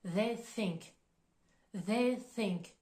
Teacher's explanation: Le TH de they, il est plus prononcé, on va mobiliser les cordes vocales, tandis que le TH de think, il va être plus doux.